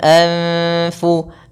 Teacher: Anfu, ini adalah nun sukun diikuti oleh fa, sama seperti nun sukun diikuti oleh sin, yang merupakan huruf ikhfa. Jadi cara membacanya adalah dengan mengaburkan bunyi nun ke arah huruf fa, anf. Namun, itu langsung menuju ke makhraj dari huruf fa, yaitu bibir kita, tempat gigi atas menyentuh bibir bawah, anfu.